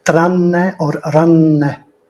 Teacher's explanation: the two n's are clearly pronounced as a double or a geminate or a long consonant